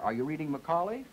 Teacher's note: Notice, please, that I say all of this on pitch two until I get to that primary stress where I go to three and I remain on three, and then I go up at the end, and that was what that little double bar meant. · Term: intonation pattern